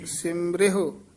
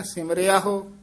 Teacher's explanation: ਸਿਮਰਿਹੁ ਇਸ ਤਰ੍ਹਾਂ ਉਚਾਰਨ ਕਰਨਾ ਸਿਮਰਿਆਹੋ ਅਾ ਨਹੀਂ ਵਿੱਚ ਲਾਉਣਾ